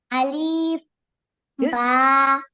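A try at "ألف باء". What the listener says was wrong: আলিফের টান দিলেন কেন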